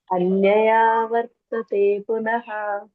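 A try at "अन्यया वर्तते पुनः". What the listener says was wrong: ಅಲ್ಲಿ ಅನ್ಯಯ ಆವರ್ತತೆ ಅಂತ ಆಗ್ಬೇಕು. ಅದಕ್ಕೆ ಅಷ್ಟು ದೀರ್ಘ ಕೊಟ್ಟಿದ್ದಾರೆ ಅಲ್ಲಿ. ಅನ್ಯಯಾ ವರ್ತತೆ ಪುನಃ. ಅನ್ಯಯ ಅಲ್ಲಿ ಎಳ್ಕೊಂಡ್ರೆ ಸಾಕಷ್ಟೇ, ಆಯ್ತಾ? ಅಲ್ಲಿ ಅಕಾರ ಅದರಲ್ಲೇ ಬರುತ್ತೆ. ಅನ್ಯಯ ವರ್ತತೆ ಪುನಃ.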